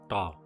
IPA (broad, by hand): ɖa